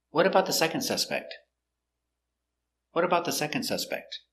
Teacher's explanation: this is an information question it starts with what question word so the intonation goes down at the end